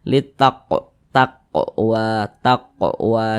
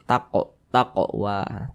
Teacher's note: Dilihat di samping huruf qaf termasuk huruf qalqalah. Kalau sukun ya dipantulkan. Pantulkan bacanya.